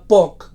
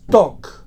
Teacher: si commutem el so bilabial oclusiu sord de la paraula poc pel so dental oclusiu sord, el resultat és toc. Es tracta d'una commutació significativa, perquè el resultat és una paraula diferent amb un significat diferent.